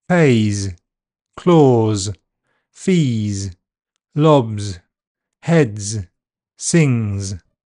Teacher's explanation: when a word that ends in a vowel sound or a voiced consonant is pluralized with S, the pronunciation is normally Z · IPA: /z/